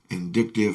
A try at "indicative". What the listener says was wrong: Indicative, yeah. Sorry, it sounded like vindictive.